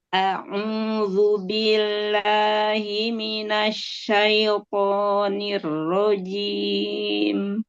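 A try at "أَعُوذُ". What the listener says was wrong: Ya, huruf ain domanya monyong lagi. A'udzu. Turunkan rahang dan bibir bawahnya. Asyaito.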